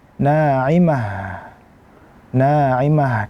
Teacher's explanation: Karena huruf ta almarbutah ketika diwakafkan adalah dia menjadi huruf ha. Maka kita sempurnakan huruf ha-nya kita baca naimah.